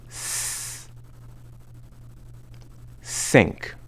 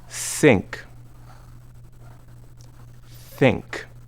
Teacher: For the sound s in sync, your tongue is behind your teeth.